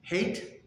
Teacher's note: that's actually kind of a guttural. There's kind of a CH sound in there.